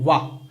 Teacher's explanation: वा जब आप बोलते हो ना तो दांत और ओंठ दोनों लगते हैं। आप देखिए दांत और ओंठ दोनों, वाह। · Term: दंतोष्ठ वर्ण